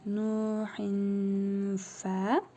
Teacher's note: Gördüyünüz kimi tənvin gəlib əsrəli, sonra fə hərfi gəlib. İhva qaydasına görə tənvindəki nun hərfini bir əlif miqdarı uzadaraq burnumuzda tələffüz edirik.